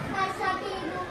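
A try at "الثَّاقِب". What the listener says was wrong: Panjang pendeknya kurang lagi.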